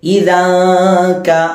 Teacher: മറിച്ച് ഇദൻക എന്നോതാതെ ഇദാക, അഥവാ നാവ് ഈ നൂനിന്റെ മഖ്റജിൽ പോകാതെ നൂനിന്റെ മഖ്റജിൽ കൊണ്ട് മുട്ടിക്കാതെ ഏകദേശം അടുത്ത് വരെ കൊണ്ടുപോയി അവിടെ നാവും സ്റ്റോപ്പ് ചെയ്തതിന് ശേഷം തരിമൂക്ക് കൊണ്ട് മണിക്കാം. അപ്പോൾ ഇവിടെ നമ്മൾ യഥാർത്ഥ മഖ്റജിനെ മറച്ചു വെച്ച് അവിടെ നമ്മളൊരു തട്ടിപ്പ് കാണിക്കുകയാണ്. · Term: ഇഖ്ഫാ